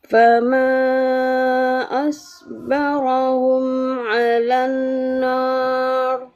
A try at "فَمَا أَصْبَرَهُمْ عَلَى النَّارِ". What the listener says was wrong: Dengungnya ditahan yang lama lagi. Alan nar. Gitu.